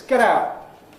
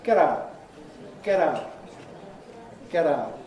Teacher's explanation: I'm doing the American style voicing of the /t/, making it like a quick /d/ or an /r/ sound almost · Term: T-voicing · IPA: [ˈget̬ ˈaʊʔ]